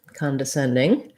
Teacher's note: the send syllable gets the stress. So our con and d syllables are going to be shorter and reduced. Although we do have some secondary stress on con, because often if con is unstressed, it would have the schwa, the sound.